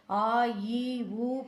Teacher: ஆ ஈ உ போன்ற நெடில் எழுத்துகளுக்கு உயிர் மெய் நெடில் எழுத்துகளுக்கும் இரண்டு மாத்திரை